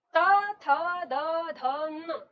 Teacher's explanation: हम दांत से अपनी जीभ टच करते हैं और तब इन पांचों वर्णों का उच्चारण करते हैं।